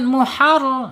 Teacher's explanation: ro harus dibaca tebal fathah · secara makhraj ada di ujung tepi lidah menyentuh langit-langit yang depan ya mendekati pangkal gigi seri. Kemudian secara sifat ada di tawas ya antara tertahannya suara asyidah dan mengalirnya suara arrakwa.